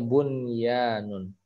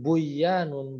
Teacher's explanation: Ya, itu nun sukun ketemu ya. Harusnya idgham biguna tapi ini dibaca jelas, izhar.